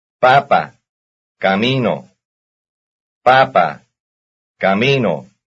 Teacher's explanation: Both have the stress on the second last syllable.